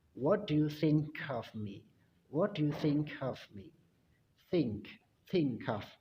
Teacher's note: jadi di situ huruf K yang ada di kata think itu digabungkan dengan of. Jadi dibaca cough.